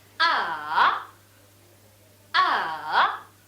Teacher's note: the third tone is falling, then rising tone